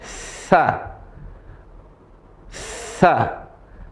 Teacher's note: Ujung lisan ketemu dengan ujung gigi seri. Ujung lisan, ujung lisan ketemu dengan gigi seri bawah.